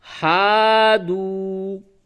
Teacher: یہ الف مدہ ہے، تھوڑا سا کھینچیں گے اس کو، اور یہ واو مدہ ہے، اس کو بھی تھوڑا سا کھینچیں گے